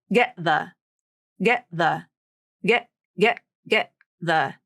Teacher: That's the stop T, the glottal stop T. The vocal cords actually come together and close off the air and stop the vibration of the vocal cords. It's the absence of sound.